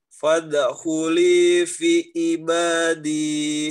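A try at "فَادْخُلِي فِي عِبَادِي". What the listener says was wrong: Panjang pendeknya. Fi-nya dipanjangin. Fi-nya. Iya, panjangin.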